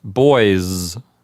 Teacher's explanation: the s at the end of the word boys really is pronounced like a z